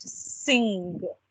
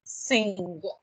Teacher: the back of your tongue is kind of moving towards the roof of your mouth. The sound comes from the back of your mouth. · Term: ng sound